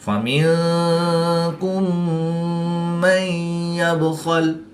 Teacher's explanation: میم ساکن کے بعد دوسری میم ہے تو یہاں پر ادغام شفوی ہوگا، یعنی غنہ کر کے پڑھیں گے